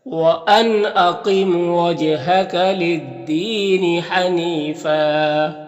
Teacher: جیم میں قلقلہ ہو رہا ہے، جیم کی آواز ٹکرائے گی اس کو ادا کرتے وقت اپنے مخرج سے · للدین، یہاں پر یا مدہ ہے، ایک الف کے برابر کھینچ کر پڑھیں گے۔ · قاف یہ حروف مستعلیہ میں سے اسے پر پڑھنا ہے۔